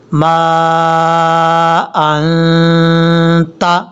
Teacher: نون والقلم وما یسطرون ما انت، میم کے آگے جو الف ہے، الف کے اوپر مد ہے، اس مد کو مد منفصل کہا جاتا ہے، دو الف کے برابر آپ نے اس کو لمبا کرنا ہے۔